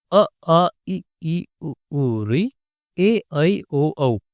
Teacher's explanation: इन स्वरों को बोलते हुए आपकी नाक में कोई वाइब्रेशन या हवा का दबाव महसूस नहीं होता।